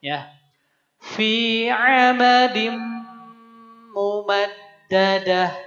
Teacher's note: Jadi leburkan ke huruf mimnya dan masukkan ke rongga hidung suaranya. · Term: idgham